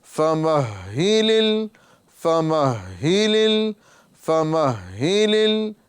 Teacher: آپ دیکھیں گے یہاں پر ہا یہ مشدد ہے تو اس کو احتیاط کے ساتھ ادا کرنا ہے۔ فمہ یعنی پہلے والی حرکت سے ملانا ہے، میم کو ہا سے ملانا ہے، پھر ہا کے نیچے جو حرکت ہے اس کو بھی پڑھنا ہے · ہا کے اندر ہا کے مخرج میں ہلکی سی تاخیر ہوگی، ٹھیک ہے، یعنی وہاں پر ہا کے مخرج میں ہمیں ٹھہرنا ہے۔